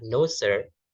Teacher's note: Jadi dinaikkan dulu intonasinya, kemudian diturunkan. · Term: rise fall pitch